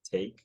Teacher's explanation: the face vowel that starts higher than mine